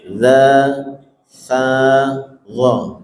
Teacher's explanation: zal sama dha, ujung lidahnya sama, menyentuh gigi seri atas